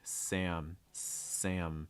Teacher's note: make sure you're holding that m sound long enough